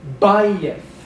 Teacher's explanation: it's penultimately stressed. You pronounce it more loudly.